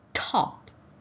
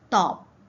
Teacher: Say top in English. Can you feel the air? Now say top in Malay. Notice there's very little air.